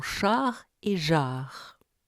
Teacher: le rapprochement de la pointe de la langue et de l'arrière des alvéoles accompagné d'une projection bilabiale produit les choint teintes du français